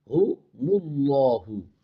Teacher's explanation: اللہ کا لام خوب موٹا کر کے پڑھنا ہے کیونکہ اس سے پہلے پیش ہے۔ اللہ کے لام سے پہلے بھی زبر اور پیش آ جائے تو اللہ کا لام بھی موٹا ہوتا ہے۔